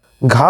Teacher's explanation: घा हमारा कंठ से बोला जाता है।